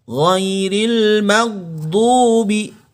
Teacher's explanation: huruf gha sukun ini tidak boleh memantul karena dia tidak termasuk huruf-huruf pantulan.